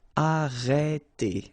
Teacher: you get the sound E. Okay, so it's really open.